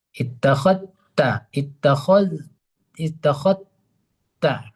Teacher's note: Zal diidghamkan ke huruf ta. Artinya zal itu kalau mana idgham kan artinya zal itu tidak lagi dibaca. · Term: idgham kamil